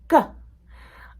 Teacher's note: the placement of your tongue is that it's touching the roof of your mouth way in the back. They are still quick sounds.